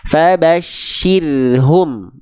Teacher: Jadi pangkal lidahnya jangan naik. Roh sukunnya sebelumnya kasroh tipis